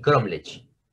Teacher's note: Ahora, entonces, si esta es la última y esta es la penúltima sílaba, entonces la tonicidad está en la penúltima sílaba. Y si la tonicidad está en la penúltima sílaba, entonces esta palabra es grave.